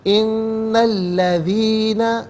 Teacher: ان الذین، ان میں نون پر زبر ہے، اس سے الذین کے لام کے ساتھ ملائیں گے، درمیان میں سے الف یعنی حمزہ کو حذف کیا جائے گا